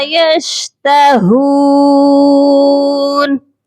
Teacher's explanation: ہا کو ایک الف کے برابر لمبا کر کے پڑھیں گے کیونکہ ہا کے ساتھ واو مدہ ہے۔